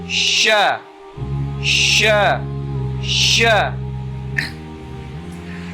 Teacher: letaknya ada pada wasatul lisan, tengah lidah bertemu dengan langit-langit atas. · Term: huruf sya